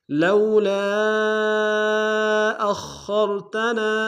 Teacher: کھینچیں گے خواہ موٹا ادا کریں گے را کو سامنے گے را کو موٹا ادا کریں گے